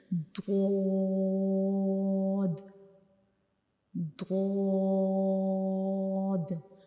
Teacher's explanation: زبان کے کنارے جو ہیں وہ ہمارے اوپر کی داڑوں کی جو جڑیں ہیں, اوپر والی جو داڑیں ہوتی ہیں ان کی جڑوں کو ٹچ کریں گے ہماری زبان کے کنارے. تو یہ ضاد کا مخرج ہے.